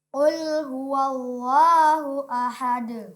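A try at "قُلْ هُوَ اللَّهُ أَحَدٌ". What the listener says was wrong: Iya, kemudian Allahnya ditebalkan. Qul huwallahu ahad.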